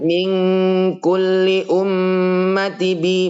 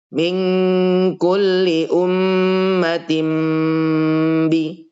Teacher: iqlab adalah mengganti nun sukun menjadi mim